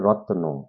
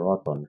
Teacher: কিন্তু যখন এটা উচ্চারণ করি তখন রতন কেমন হয়, র ত এর সাথেই একটা কি ধ্বনি দিতে হচ্ছে, অ ন, অর্থাৎ এই যে রত্ন সেখান থেকে এসেছে রতন, এই যে অটার মাঝখানে একটা অতিরিক্ত স্বরধ্বনি চলে আসছে, যার কারণে রত্ন থেকে রতন, এটা একটা কি ধ্বনি পরিবর্তন, অ্যাকচুয়ালি মাঝখানে একটা স্বরধ্বনি আসছে জন্য, অর্থাৎ স্বরের আগমন ঘটছে, এই জন্য এটার নাম কি মধ্য স্বরাগম।